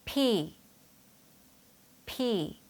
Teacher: 해요 여기 보이는 이 모양처럼 입술에 힘을 주셔서 발음 하셔야 하는데요 이때 p 하고 짧게 끊지 마시고요 약간 길게 빼면서 p 하고 소리 내셔야 해요